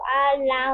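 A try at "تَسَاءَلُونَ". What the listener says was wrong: আলুন, নুনের উচ্চারণটা ভালো করে করতে হবে। শেষে যে হরফটা থাকবে সেই হরফের উচ্চারণগুলো আপনার একটু ঝাপসা শোনাচ্ছে। ঝাপসা না করে একেবারে ক্লিয়ার করতে হবে। এটা সা আলুন, আলুন, নুনটা যেন বোঝা যায়। আলুন।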